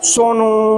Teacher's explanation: सोनू में तो ऊ की मात्रा है ही, लेकिन इससे प्लुत लगा देंगे और दीर्घ कर देंगे